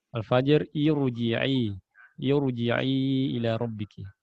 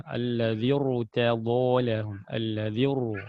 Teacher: pokoknya ada hamzah wasol ya sebelum huruf ro, maka dibaca tebal